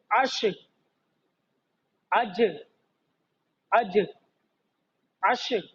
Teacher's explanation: ये बीच जुबान जो है हम तालू से मिलाएंगे तो अदा हो जाएगी